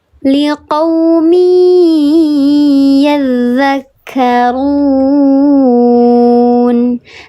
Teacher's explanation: Dibacanya dileburkan atau dimasukkan disertai dengan gunnah 3 harokat lebih utama. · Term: idgham bi gunnah